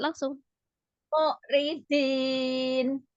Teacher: Yang ri-nya jangan dipanjangkan. Ridin, langsung.